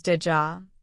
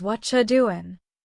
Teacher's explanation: Did you becomes did ja. What are you doing becomes what you doing. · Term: connected sounds